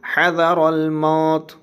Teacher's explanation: تا میں زیر نہیں پڑھیں گے بلکہ تا میں ساکن پڑھیں گے، تائے ساکنہ پڑھیں گے اس کو۔